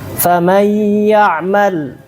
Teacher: Nun dia masuk kepada makhraj huruf ya, tapi bersamaan dengan itu nun ini dia tetap tersisa sifatnya. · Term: Sifat gunnah